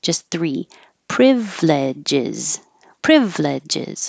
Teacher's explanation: we're dropping the middle I so we don't have four syllables